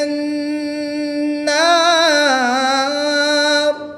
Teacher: را کی زیر کو وقف میں ساکن کر دیں گے اور وقف کی حالت میں یہاں پر مد عارض ہوگی، 2 سے 3 الف تک کھینچ کر پڑھیں گے